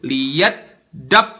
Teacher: Harusnya huruf tasdid itu langsung masuk ke hurufnya, langsung mati di situ. Lihat dab, gak boleh ada jarak pas masuk ke huruf-huruf bertasdid.